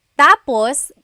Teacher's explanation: when the emphasis is at the end that means finished when the emphasis is on the first syllable tapos then it